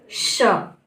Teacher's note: जब हम श बोलते हैं तो हमारे मुंह से सीटी की तरह से आवाज आती है